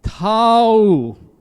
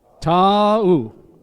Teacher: Each vowel sounded and said separately.